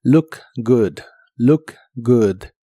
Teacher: la doble o de good se pronuncian como si fueran una u corta y explosiva.